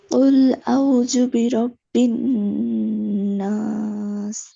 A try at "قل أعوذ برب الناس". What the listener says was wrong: দাল কি এমনি উচ্চারণ করে? দাল নরম করে না। কুল আউ, ওতে যে একালিপ টান হবে।